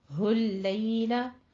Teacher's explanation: हुल लैल के जो लाम है उसको बारीक रखना है आपने, हुल लैल नहीं कहना, हुल लैला। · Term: लाम बारीक